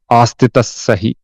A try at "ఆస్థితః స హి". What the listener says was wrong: ఆస్థిత తవతు ఆస్థిత తవతు. నువ్వు త్వరగా చెబుతున్నావు అంతేగాని తావ పలకట్లే. ఆస్థిత సహి. స్థి అంటున్నావు. తావ ఉత్త పలకట్లేదు, ఉత్తు పలకటం లేదు. ఆస్థి అను.